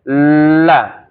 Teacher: Keluar suaranya itu di sisi lidah. Maksudnya di pinggiran. Ya. La seharusnya keluar ke depan, karena ketutup jalannya jadi keluar sini. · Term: huruf lam